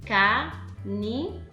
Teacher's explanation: Em canindé, a sílaba forte é o dé.